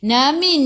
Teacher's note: nun ada sukun, jelaskan nun izhar halqi